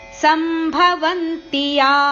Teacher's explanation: ಇಲ್ಲಿ ತಿ ಅಕ್ಷರ ರಸ್ವ ಇರುವ ಕಾರಣ ಯ ಅಕ್ಷರವನ್ನು ಜೊತೆಗೆ ಹೇಳಬೇಕು